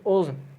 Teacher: یہ مستعلیہ کا لفظ ہے، یہ منہ بھر کر پڑھا جائے گا